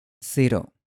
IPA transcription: seɾo